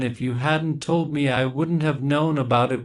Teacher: We stress told and known. Those are the main words we hear. The rest of the words are spoken very quickly. It's normal that you don't hear the other words clearly.